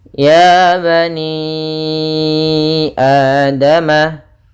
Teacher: panjangnya untuk Mad Jaiz yaitu empat harakat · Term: Mad Jais munfasil